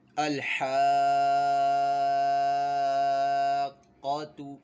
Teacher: یہ قاف حروف مستعلیہ میں سے تو اس کو ہم نے پر بھی پڑھنا ہے